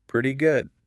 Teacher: And notice the intonation there. It goes up at the end.